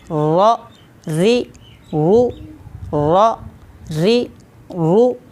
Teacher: ज़ुबान का किनारा और सामने वाले दांत यानी कि सनाया, रबाई और अनयाब के मसूड़े, लेकिन इसमें साथ पुश्ते ज़ुबान यानी कि ज़ुबान की बैक को भी थोड़ा सा दखल है। रा को अदा करते वक्त एहतियात करनी चाहिए कि एक रा अदा हो, र या अर, ये आवाज़ें नहीं आनी चाहिए, बल्कि रा।